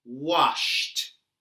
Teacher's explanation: The final sound in the verb wash is sh. Sh is a voiceless sound. So, when we say wash in the past, we say washed.